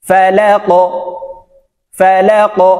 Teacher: ফা জবর ফা, লাম কফ জবর লাক, ফালাক, এই লাম কফকে ধরবে, ধাক্কা দিয়ে উচ্চারণ করতে হবে যেহেতু কফ কলকলার হরফ। ফালাক ফালাক, এই কফ উপরের দিকে ধাবিত করে উচ্চারণ করতে হবে।